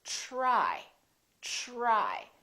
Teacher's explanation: the TR together make this sound almost like a CHR, almost like ch, but it's a softer one. It's ch, try, try.